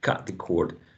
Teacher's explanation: So you have a wedge, cut, and then a long O.